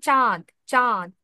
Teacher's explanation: যদি কোন শব্দের উপরে চন্দ্রবিন্দু থাকে তাহলে সেক্ষেত্রে হচ্ছে অনুনাসিক্য হালকা অনুনাসিক্য উচ্চারিত হবে